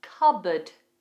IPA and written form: kʌbəd (Cupboard)